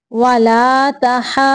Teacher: ضاد پہ تھوڑی دیر رکیں گی کیونکہ ضاد جو ہے یہ مشدد ہے